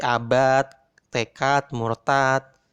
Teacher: D ini kalau nggak ada kol-kolahnya akan bunyi T seperti abad, tekad, murtad. Maka dalam bahasa Arab itu diberikan kol-kolah biar tidak menyerupai bunyi T.